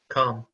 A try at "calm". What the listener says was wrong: It's a bit more open, like calm, calm, calm. So that's the difference, okay? This one is deep and back, and this is is open, and your jaw comes down like father, okay? Car. It's really different.